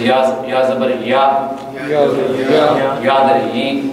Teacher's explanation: حرف ایک ہے، اگر یہ مدہ ہو یعنی اس پر اگر مد کیا جا رہا ہو تب اس کا مخرج ہوتا ہے جوف دہن، یعنی منہ کے اندر کا خلا۔ جب اس پر مد نہ ہو، یہ متحرک ہو، تو پھر اس کا مخرج جوف دہن نہیں ہوتا بلکہ یہ وسط لسان ہوتا ہے